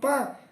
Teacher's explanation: o P é uma consoante oclusiva, surda, bilabial, e quer dizer, surda porque não é produzida pelas cordas vocais, né?